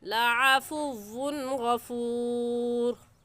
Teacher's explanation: लअफ़ुव्वुन पर हम गुन्ना नहीं करेंगे क्योंकि तनवीन के बाद हुरूफ हल्की में से गैन आ गया है।